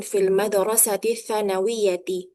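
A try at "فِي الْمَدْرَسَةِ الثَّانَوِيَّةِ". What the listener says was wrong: Fa panjang. Fa panjang.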